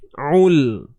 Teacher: Ul, huruf ain sempitkan tengah kerongkong kita.